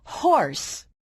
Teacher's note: put your hand on your throat it did not move or vibrate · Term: ha sound